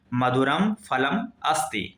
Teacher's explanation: इस मां में कोई स्वर नहीं है, उच्चारण भी बिल्कुल आधा होगा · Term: हलंत